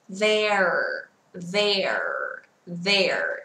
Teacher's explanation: Chữ R cuối từ, vì thế chúng ta phải cong lưỡi nha.